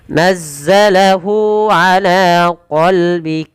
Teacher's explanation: Kemudian pada lafal hu dan nazzalahu, kedua-duanya kita baca dengan bacaan mad silah qasirah, yaitu dengan memanjangkan huruf h-nya ditandai dengan waw kecil yang ada setelah pada huruf h ini menandakan panjang untuk mad silahnya.